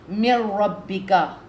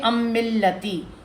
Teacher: نون اور تنوین جو ہیں ختم ہو جائیں گے, مدغم ہو جائیں گے, گم ہو جائیں گے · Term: ادغام